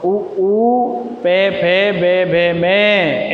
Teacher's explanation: क्योंकि जब इनका उच्चारण करते हैं तो हमारे जो होठ हैं उन होठों की पूंगी सी बन जाती है। ऊ, पे, फे, पे वर्ग को बोलेंगे तो होठ भिड़ेंगे, इसलिए इनका उच्चारण स्थान क्या है? ओष्ठ।